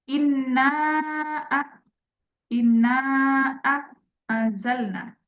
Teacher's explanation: memanjangkan kadar mad thobi'i lebih dari dua harakat